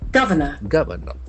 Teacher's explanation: the accent falls on the first syllable.